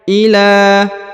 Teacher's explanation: huruf la dipanjangkan dua harakat karena di atasnya terdapat Alif kecil